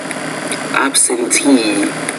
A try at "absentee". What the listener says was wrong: No, it's absentee. So the last syllable is stressed, which means, it needs to be longer, louder, clearer, and also higher pitched.